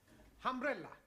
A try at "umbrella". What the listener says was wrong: Yes, good, but not humbrella, umbrella.